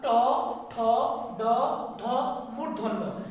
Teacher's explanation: তাহলে আমরা যদি একটু খেয়াল রাখি যে এই বর্গীয় ধ্বনির ট, ঠ, ড, ঢ মূর্ধন্য, এটা হলো মূর্ধন্য, যেহেতু আছে মূর্ধন্য, এখানে মূর্ধা থেকে উচ্চারিত হয়, এই ধ্বনির নাম হচ্ছে মূর্ধন্য ধ্বনি